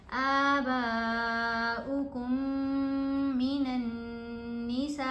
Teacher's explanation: پھر با کو یہاں ہم نے 5 الف کی مقدار جتنا لمبا پڑھا ہے، یہاں پر میم ساکن ہے، یہاں آگے میم مشدد ہے، تو یہ میم کا ادغام ہے، یہ میم ساکن نہیں پڑھی جا رہی. کاف کو ہم نے غنہ کرتے ہوئے مشدد میم سے ملانا ہے